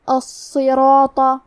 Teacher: کلمت الصراط میں حرف الصاد پہ تشدید ہے، تو ہمیں 2 حرف کے برابر صاد کو پڑھنا ہے، اور صاد حروف تفخیم میں سے ہے، تو ہم یہ حرف کو بھاری آواز میں پڑھیں گے۔ را پہ زبر ہے، لہذا یہاں را کا حکم ہے تفخیم، تو ہمیں را کو موٹی آواز میں پڑھنا ہے، کیونکہ اس کے بعد مد الف ہے، اور مد الف اپنے پیچھے والے حرف کا حکم لیتا ہے تفخیم میں اور ترقیق میں، تو ہمیں مد الف کو بھاری آواز میں ادا کرنا ہے۔